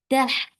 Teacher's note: And for fatha, open your jaws, attach with ha. Ha will get sifa of rohwa, and it is from your throat. Tah. The sound should flow.